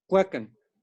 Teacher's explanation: Es el sonido de K con una labialización.